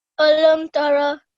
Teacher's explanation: we must be careful not to elongate the meme sound over here. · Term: izhar meme sakin